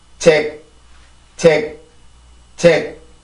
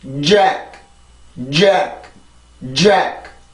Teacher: 영어의 J 발음, 여기에서 나타난 이 J 발음이 그 J 발음을 쓰게 되는데 이 발음이 우리나라의 지읒보다 훨씬 더 공기가 세요. 나갔다가 한번 나오기 때문에 그렇죠.